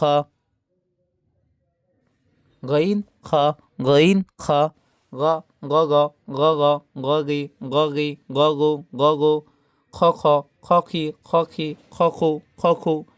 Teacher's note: তিন নাম্বার মাখরাজ হলকের শেষ ভাগ হইতেন খ